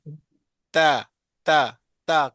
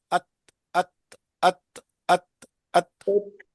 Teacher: تو سامنے والے اوپر والے دانت 2 دانتوں کی جڑ الحمد کو للہ جڑ کو جس طرح دیکھو نا آپ نقشے میں دیکھ رہے ہیں، زبان کی نوک جو ہے وہ لگ رہی ہے جڑوں میں، دانتوں کے جڑوں میں، ثنایا اولیاء کی جڑوں میں۔